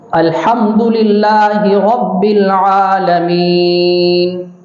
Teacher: الحمد یہاں پر ہا کو حلق سے نکالیں، اور رب العالمین عین کو حلق سے نکالیں